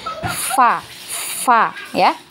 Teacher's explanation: Untuk sifat hamas ya, fa itu ada alirannya, ada udara yang mengalir banyak ya. Fa ya, udara ini yang kita keluarkan ketika mau mengucapkan huruf fa itu hamasnya ya